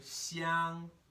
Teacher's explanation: this first tone is high in my register.